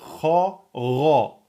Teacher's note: c'est le fond de la langue qui touche le palais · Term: lettre Ra emphatique